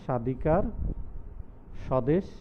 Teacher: পদের আদ্য ব্যঞ্জন বর্ণে ব ফলা সংযুক্ত হলে সাধারণত সে ব ফলার কোনো উচ্চারণ হয় না, তবে আদি বর্ণটির উচ্চারণে সামান্য ঝোঁক বা শ্বাসাঘাত পরে থাকে